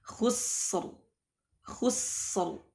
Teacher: Dan ini dalam kondisi halul waqfi 'alaiha, dalam kondisi waqaf, maka ra-nya dibaca tebal.